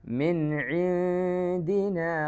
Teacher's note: നൂനിനെ ക്ലിയർ ആക്കാതെ, അണ്ണാക്കിൽ നാവ് മുട്ടിക്കാതെ മണിച്ച് ഓതുക. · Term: ഇഖ്ഫാ